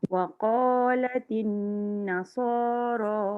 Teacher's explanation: Waqalatin nun sabdu jangan tinggal dia 2 harakat.